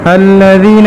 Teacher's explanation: تو ذال کے اندر جہر ہے، رخوت ہے، استفال ہے، انفتاح ہے، اور اسی طرح اسمات ہے